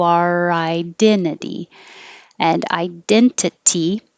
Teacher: this last t changes to a d because it's between two vowel sounds two voiced sounds makes it a d